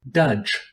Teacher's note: it is a voiced dental stop pronounced like the d in day but with the tongue against the back of the teeth